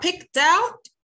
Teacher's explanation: هنا المفروض انها بتنتهي بك، والك voiceless مش voice، مفيش اي vibration هنا